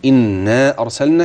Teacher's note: المد الذي يجب ان يزيد شويه زي انا ارسلنا كان بيقل عن المقدار الطبيعي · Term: المد المنفصل